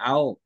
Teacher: আমরা ও টাকে পুরো উচ্চারণ করছি না ওখানে থেমে যাচ্ছি